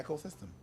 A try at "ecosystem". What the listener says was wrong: It's like, it's not echo, it's put the emphasis in S, like parameters.